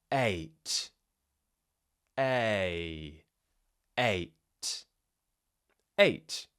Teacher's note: Remember, it's a combination of two sounds. We're starting with the jaw half open and the tongue slightly forwards and then we're moving into more of a kind of closed jaw smiling shape at the end.